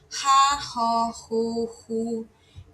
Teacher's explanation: aquela consoante que é a própria aspiração, é bem fraquinha